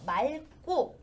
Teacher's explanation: 그런데 여기에 기억으로 시작하는 것이 들어오면 기억이 대표음으로 남는 것이 아니라 리을이 남아서 맑고 이렇게 발음이 됩니다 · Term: 자음군 단순화